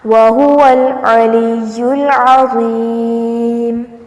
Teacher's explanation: اس کو عظیم نہیں بنانا ورنہ یہ زا بن جائے گا